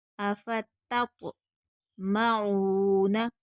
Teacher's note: افتط تت تت نہیں پڑھیں گے، پہلی تا باریک پڑھی جائے گی، دوسری تو پر پڑھیں گے کیونکہ تو حروف مستعلیہ ہے۔ افتط معون، عین حروف ہلکی ہے، حلق سے ادا ہوگا، کھینچ کر پڑھیں گے، آگے واو مدہ ہے۔